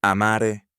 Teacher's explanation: The first conjugation carries a long A.